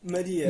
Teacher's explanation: com A fechado, já que não está na sílaba tônica